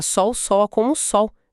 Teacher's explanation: >> Na maior parte do Brasil, a gente não pronuncia esse L com a língua no céu da boca. a gente pronuncia com som de u, ou seja, na prática, sol, sola, como o sol, virou um ditongo. >> É um exemplo perfeito, perfeito da fonética se sobrepondo à ortografia.